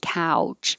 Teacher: you start open and then you get rounded